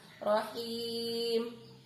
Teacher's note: rahim, haknya tipis, kemudian menyebut i seperti senyum.